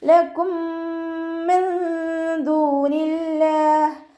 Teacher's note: മീം സാക്കിനയുടെ നിയമത്തിലുള്ള ഇദാം. സുക്കൂനായ മീമിനെ അടുത്ത മീമിലേക്ക് ലയിപ്പിച്ച് ഒന്നയോടുകൂടി ഓതി കൊടുക്കുക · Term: ഇദാം ഷഫവി